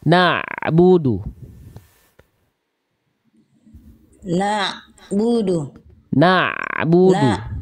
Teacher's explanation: Langsung ke ainnya. Nah, ainnya yang digeser suaranya. Dialirkan sedikit. Na'budu dari tengah tenggorokan. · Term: ain sukun